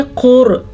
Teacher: रॉ साकिन से पहले पेश होने की वजह से रॉ पुर पढ़ी जाएगी